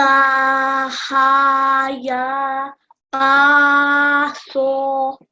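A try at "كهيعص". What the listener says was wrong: So you read the middle 2 letters correctly, but we're going to read fully the Kaf, the Ain and the Sad. So we're going to read it as Kaf, ha, ya, ayn, sad.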